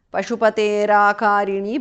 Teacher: Pashupatehe visarga changes to repha